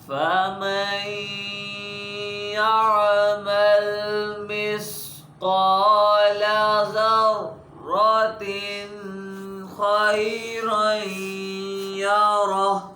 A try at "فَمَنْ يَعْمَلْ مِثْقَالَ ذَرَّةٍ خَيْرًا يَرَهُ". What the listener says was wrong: या ज़र्रतिन पहले ना के खा है ना तो उधर गुन्ना नहीं करते ना ज़र्रतिन थोड़ा सा भी नहीं